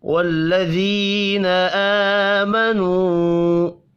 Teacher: یا مدہ ہے، ایک الف کے برابر کھینچ کر پڑھیں گے